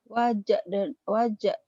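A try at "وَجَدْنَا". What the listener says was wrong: Bukan. Yang matinya kan yang dalnya. Bukan jimnya. Bukan.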